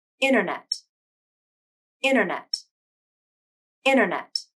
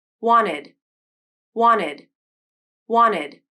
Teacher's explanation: between vowels and the second vowel is in an unstressed syllable you can use a nasal flap instead of the true t sound the nasal flap is optional it's up to the speaker to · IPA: ɾ̃